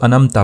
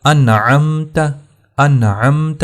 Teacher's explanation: نون کے اوپر یہاں اخفا نہیں ہوگا کیونکہ عین حروف حلقیہ میں سے ہے، لیکن نون کا اظہار ہوگا